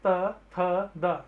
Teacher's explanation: आपका जो जीभ का अगला हिस्सा है वो आपके दांतों से टच हो रहा है